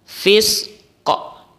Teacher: Karena huruf qaf ini adalah huruf qalqalah, maka caranya adalah dipantulkan.